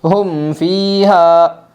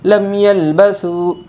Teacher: اظہار شفوی کے اندر غنہ نہیں کرنا ہے بلکہ ظاہر کر کے پڑھنا ہے